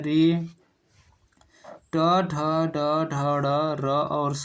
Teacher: ये सब मूर्धा से उच्चरित होते हैं